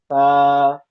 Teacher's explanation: अपनी जुबान को सामने के ऊपर के दांतों के किनारे से लगा कर रखेंगे फिर निकालेंगे नरमी के साथ ता और ता के अंदर सीटी की आवाज नहीं आएगी आएगी नहीं तो ये सीन बन जाएगी या सीन से मुशाबियत कर जाएगी। · ता की आवाज नरम होती है। इसकी आवाज भी बारीक होती है। मोटी नहीं होती।